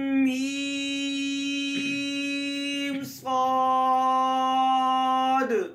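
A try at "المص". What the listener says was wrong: میم کے آخر میں غنہ آنے ہوگا. میم صاد. میم کے آخر میں جھٹکا نہ ہو. میم ایسے نہ. صاد کے ساتھ الف جو نا وہ موٹا ہو.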